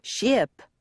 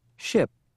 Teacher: don't try to say sh IP say ship with just a hint of a vowel